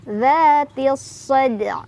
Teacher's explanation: alif lamnya tidak dibaca, langsung tekan ke huruf sad atau diidghamkan